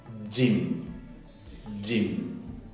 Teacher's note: cierra completamente el conducto y después lo suelto con una fricción